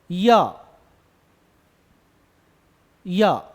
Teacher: जीभ अगर आप देखें तो तालु को टच कर रही है